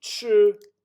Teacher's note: so it would be chew but then it's a third tone